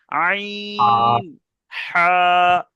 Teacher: এখানে লেখা আছে কি, হালাকের বা কণ্ঠনালীর মাঝখান হতে উচ্চারিত হয়, মানে এই যে কণ্ঠনালী আছে, এই কণ্ঠনালীর মাঝখান থেকে উচ্চারিত হবে, একদম মধ্যিখান থেকে।